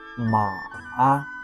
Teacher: Start low. Go a little lower than rise. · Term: third tone